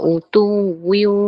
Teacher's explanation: Masa dengung, masa idgham tu kita masuk ke makhraj wow. Jadi dia akan muncung. Sebab dia dimasukkan ke dalam huruf wow.